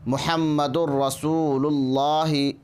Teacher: ادغام کرتے ہوئے ناک میں آواز نہیں جائے گی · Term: ادغام بلا غنہ